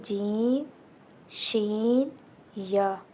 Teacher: تو ان تینوں کا مخرج ایک ہی ہے۔ تینوں حروف زبان کے درمیان اور تالو کے درمیان سے ادا ہوتے ہیں۔ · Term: حروف شجریہ